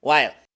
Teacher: una l como del español pero con la punta de la lengua hacia atrás retroflexo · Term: Dark l